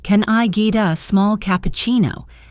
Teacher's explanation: The can I becomes kin I, and get a becomes gida.